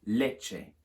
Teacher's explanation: The CT changes to a CH. Quite a hard CH sound like in macho or our word such.